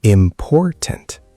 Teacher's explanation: The stress is on poor, the middle syllable.